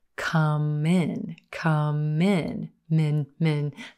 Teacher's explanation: That final M connecting and linking into the word in.